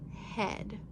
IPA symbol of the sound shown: ɛ